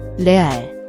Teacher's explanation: The re is a flapped sound, similar to the tt in American English butter.